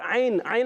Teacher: عین ادا ہوتا ہے حلق کے درمیان والے حصے سے